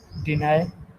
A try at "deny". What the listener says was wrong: Great.